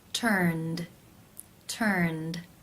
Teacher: the final sound in the infinitive is the n consonant sound which is voiced therefore it is case two where the e d is pronounced as the d sound